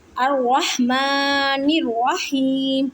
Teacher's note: ہا یا زیر ہی، ہا کو حلق کے درمیان والے حصے سے ادا کریں اور ہا کو یا ساکن کے ساتھ ملائیں اور یا مدہ کا قاعدہ کریں، یعنی کہ ایک الف کی مقدار میں کھینچ کر پڑھیں گے اور میم کو ساکن کریں کیونکہ آگے وقف کی علامت ہے۔ · الرحمن الرحیم، قرآن پاک میں آیت کے شروع میں الف کے اوپر حرکت نہ ہو تو اس الف پر زبر یا زیر لگا سکتے ہیں، اسے عارضی حرکت کہتے ہیں۔ حمزہ کو را مشدد کے ساتھ ملائیں، لام کو نہیں پڑھنا کیونکہ لام کے اوپر کوئی حرکت یا جزم نہیں ہے۔ را کو موٹا پڑھیں گے اور میم کو ایک الف کی مقدار میں کھینچ کر پڑھیں گے۔